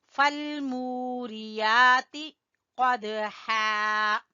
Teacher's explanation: قاف کو زبان کی جڑ سے ادا کریں گے اور دال کے اوپر ہلکا سا قلقلہ کریں گے